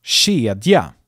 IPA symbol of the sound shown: ɕ